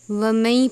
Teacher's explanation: ومئی غنہ بھی کریں گے اور نون کو یا سے ملائیں گے بھی